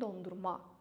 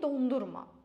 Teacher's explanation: isim kimi dondurma, vurğu axıra düşür